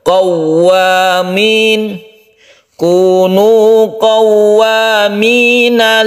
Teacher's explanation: Jadi qaw itu tasydid waw. Tasydid waw itu ditekan ke waw dan suara itu menjadi u. Qawwa tanpa didengungkan ya. Bukan qaw itu kalau idgham bigunnah.